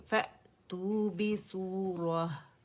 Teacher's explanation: फ़अतू पे झटका देंगे, हमज़ा पे आवाज़ कटेगी।